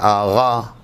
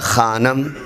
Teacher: یہ دونوں حروف حلق کے قریب ترین حصے سے ادا ہوتے ہیں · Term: غین اور خا